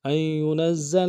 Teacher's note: نون کو زا کے ساتھ ملانا ہے، زا کے اوپر تشدید زور دیں گے